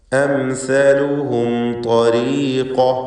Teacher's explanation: പദത്തിൻ്റെ അന്ത്യത്തിൽ വീണ്ടും സാക്കിനത്തായ മീം ഇൽഹാർ ഷഫവി മണിക്കാതെ വെളിവാക്കുക